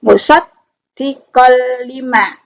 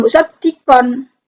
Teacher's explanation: En-nya, en dimasukkan, dilebur ke huruf berikutnya. Huruf berikutnya adalah lam. Maka bacanya qoli. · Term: idgham bila gunnah